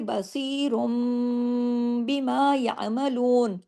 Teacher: इसलिए कि तनवीन के फौरन बाद बा आ गया, बीमा का बा आ गया। इस बा के आने की वजह से इकलाब का कायदा ये कहलाता है कि नून की आवाज़ मीम में तब्दील हो गई।